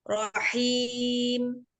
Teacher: Ya sukun yaitu matobi'iyah dibaca 2 harokat.